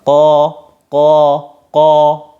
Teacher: Jadi tanpa memonyongkan bibir, suara o dihasilkan dari lidah belakang diangkat. · Kalau ko itu salah satu sifatnya adalah isti'la. Ketika isti'la maka dibarengi tafkhim, tebal, maka ko. Terus kemudian bibirnya jangan monyong.